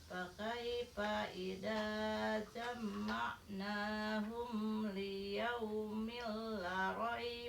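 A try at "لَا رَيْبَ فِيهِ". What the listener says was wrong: Mana panjangin la raiba fi.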